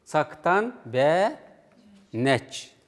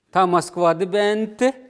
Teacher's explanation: В специальном вопросе остается звук гласный. В общем вопросе гласного звука нет.